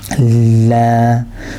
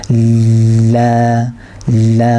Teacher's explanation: So it's a vibrating sound. Your tongue should vibrate when you're making that. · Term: lam